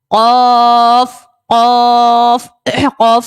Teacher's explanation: قاف کو ہم نے موٹا پڑھنا ہے کیونکہ قاف بھی حروف مستعلیہ کا ہے